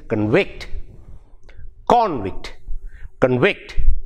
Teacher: verb it becomes it becomes the same word same spelling but the stress changes it goes to the second syllable